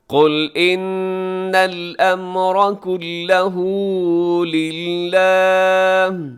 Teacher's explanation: قل میں قاف موٹا رکھیے گا، لام باریک ہے